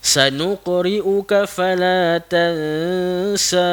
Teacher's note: Kalau nak berhenti, kalau nak berhenti kena berhenti dengan kadar 2 harakat saja